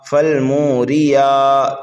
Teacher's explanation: یا کے اوپر کھڑا زبر ہے، ایک الف کے برابر کھینچ کر کے پڑھیں گے